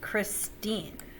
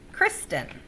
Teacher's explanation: christine has the second syllable accented kristin has the first